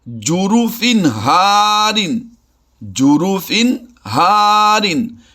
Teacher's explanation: तनवीन दो ज़ेर की तनवीन के बाद हा हुरूफ हल्की से है तो यहाँ पर हमने इजहार करना है, आवाज़ को छुपाना नहीं है।